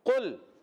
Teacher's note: قاف ادا ہوتا ہے زبان کی جڑ اور تالو کے نرم حصے سے قاف ادا ہوتا ہے قل میں لام کو ہلانا نہیں ہے